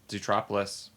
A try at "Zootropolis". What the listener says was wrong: Zo. No, don't say zoo.